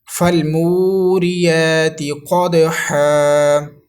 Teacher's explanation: یہ دو زبر الف مدہ سے بدل جائیں گی